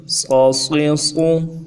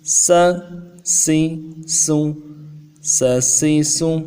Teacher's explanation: صاد کو موٹا کرنے کے لیے زبان کا بیچ بھی اٹھائیں گے اور سین کو انتہائی نرمی کے ساتھ ادا کریں گے